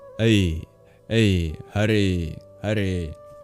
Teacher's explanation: The sound A is actually a very quick diphthong, which is a transition from one vowel to another. It's a very quick guttural A to a palatal E.